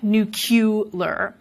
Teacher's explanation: there may be some metathesis involved as the vowel and the L switch places, but then there's also the insertion of that y, nuclear. That is probably through analogy with a word like molecular, nuclear.